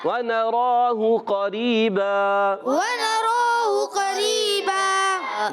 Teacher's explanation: اور دو زبر کی تنوین کو ہم وقف کرنے میں الف سے بدل دیں گے, اس کو کہتے ہیں وقف بالابدال مع الالف.